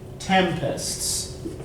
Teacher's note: So, tempests, right, storms. You put the emphasis on the first syllable, the second syllable is weaker. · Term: Troi, trochee